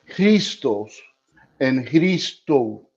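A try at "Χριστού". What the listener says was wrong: but you have the emphasis at the end, so it's not Christos, it's Christos. Yes, and this one no, Christou. Christou. This is our U sound, and I'm gonna send you back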